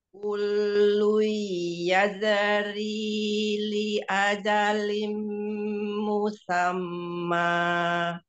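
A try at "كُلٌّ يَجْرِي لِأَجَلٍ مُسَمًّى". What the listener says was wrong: Jangan ditambahin e ya, Eyang. Kullu yajri li ajalim musamma.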